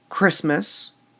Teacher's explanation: We stress the Christ in Christmas